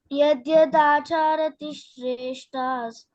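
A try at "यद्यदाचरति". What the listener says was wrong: దాచారతి కాదు, చా లేదు ఇక్కడ, చా దీర్ఘం లేదు. యద్యదాచరతి యద్యదా చెప్పు. చరతి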